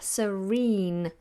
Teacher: But what I mean is, if an R comes before a vowel, like serene, if you are serene, the letter after the R and the sound after the R is a vowel sound. So we sound the R, serene.